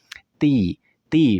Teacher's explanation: artinya pita suara itu tidak bergetar jelas saat Kita mengucapkannya